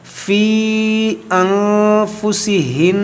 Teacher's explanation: نون مشدد میں غنہ کریں گے، فی ان، اب یہاں پر نون ساکن کے بعد فا، یہاں پر اخفا کریں گے